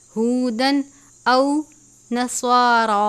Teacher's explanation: طوا ہے، تا نہیں پڑھنا، طوا پڑھیں گے، والاسباط کانوا ہودن، تنوین کے بعد حمزہ ہے، حروف حلقی میں سے غنہ نہیں کرتے · ہے، حروف حلقی میں سے غنہ نہیں کرتے، ہودن او نصارا، صاد اور را دونوں کو پر پڑھتے ہیں